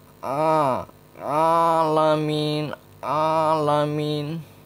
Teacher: suaranya tidak boleh masuk ke hidung dia murni dari tengah-tengah tenggorokan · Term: huruf Ain